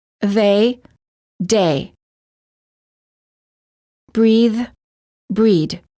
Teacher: some non-native speakers incorrectly pronounce the voiced th as a d